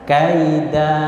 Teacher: Kaida ini ketika tanwin ada alifnya ini diwakafkan, maka dia dibaca 2 ketukan saja. Kaida tek berhenti.